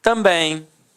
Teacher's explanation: Repare que a sílaba tônica é a última e é terminada em em. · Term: oxítona